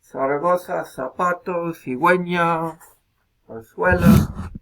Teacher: fonema adicional, que es Z. Interdental, fricativo sordo.